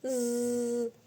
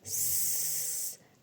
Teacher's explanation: So when you say Z, you can feel the vibration, but when you say S, you cannot feel it. So this is the main difference between them.